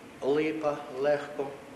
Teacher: У, скажімо, L тверде, лапа, лопата, л - м'яке, ліс, перед і, сіль, L нейтральне, середнє десь перед е і перед и